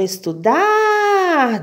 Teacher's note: a sílaba mais forte a sílaba tônica é o dar